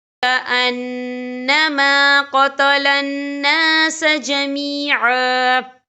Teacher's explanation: وقف کی صورت میں ایک زبر پڑھا جائے گا، 2 زبر نہیں پڑھے جائیں گے